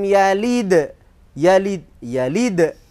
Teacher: karena dalnya itu di akhir kalimat walaupun bukan di akhir ayat itu tetap Qalqalah Kubro